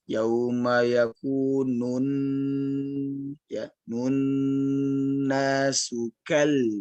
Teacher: ini nunnya jangan lupa dipanjangkan lebih lama lagi, lebih panjang.